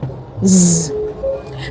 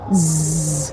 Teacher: this speech sound is described as the voiced fricative alveolar. So it's voiced because when you put your fingers on your Adam's apple, as against the consonant speech sound, which is the voiceless variant of it, this one vibrates.